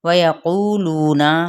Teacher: واو ہونٹوں کی نا تمام گلائی سے